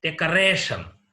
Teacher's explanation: Here, the stress is laid on the second syllable from the last. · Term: penultimate syllable